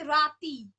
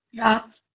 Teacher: উচ্চারণ বৈশিষ্ট্যের জন্য যখন কোনো শব্দের অন্ত বা শেষের স্বরধ্বনিটা যখন লোপ পায় তাকে বলা হচ্ছে অন্ত স্বরলোপ